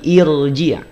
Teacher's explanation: ya yang awal itu bukan irju tapi irji rnya ro tebal Kenapa R tebal karena dia diawali oleh Hamzah